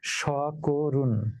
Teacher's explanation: অর্থাৎ কটা কো হয়ে গেল, মধ্য অটা সংবৃত হয়ে ও হয়ে গেল। অতএব শব্দ উচ্চারিত হচ্ছে সকরুণ।